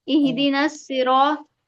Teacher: यहाँ पर रा को पुर पढ़ेंगे, रा पर जबर इसलिए पुर पढ़ा जाएगा,